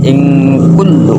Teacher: menyamarkan suara nun sukunnya atau tanwinnya sebab bertemu dengan huruf kaf. Kul tasdid lam. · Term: ikhfa hakiki